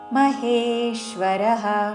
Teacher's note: మహేశ్వ హే దీర్ఘము దాని మీద ఆఘాతం